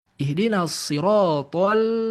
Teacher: lam di sini harus tarkik, harus tipis. Dia tidak boleh menggunakan rahangnya th.